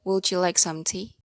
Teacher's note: For the yes-no question, the intonation is high pitch, which is there is a high pitch at the end of the question